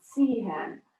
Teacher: It's not a voiced S at all. It's really a TS sound.